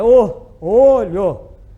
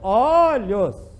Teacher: então no singular é fechado é o olho no plural e aberto olhos fred não é a mesma coisa não são mesmo só usam